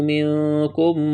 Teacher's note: منکم اخفا کریں گے، نون ساکن کے بعد کاف ہے